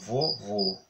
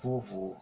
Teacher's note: O último O recebe lá o acento circunflexo, vovô, o som mais fechado.